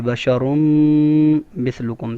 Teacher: آواز ناک میں ایک الف کے بقدر ایک الف کی مقدار آواز کو ناک میں روک کر رکھیں گے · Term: غنہ